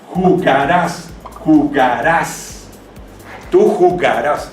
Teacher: El sonido fonético está en la última sílaba, se convierte en una palabra aguda.